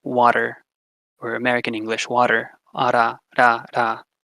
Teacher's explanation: Next, we have a tap. We included the most common tap, which is the alveolar tap. So just ra, ra, like in English, water, water, or American English, water, ara, ra, ra.